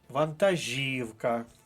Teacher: вантажівка наголос на третій склад